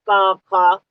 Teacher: इनका उच्चारण करते समय जीभ जो है वो कोमल तालु में स्पर्श करती है, कोमल तालु में। और इनके बोलने में कंठ का सहारा लिया जाता है, गले के सहारे बोले जाते हैं, का खा।